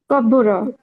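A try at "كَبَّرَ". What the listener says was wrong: না কাব্বু না, কাব্বারা, কাব্বারা। মাঝখানের স্টাইলটা জবরই আসবে, কাব্বারা।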